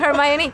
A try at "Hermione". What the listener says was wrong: Hermione, Hermione. It's because you pronounce every letter in Spanish, which makes sense.